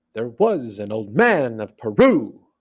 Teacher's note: The meter is da-dun, da-dun, da-dun, da-dun.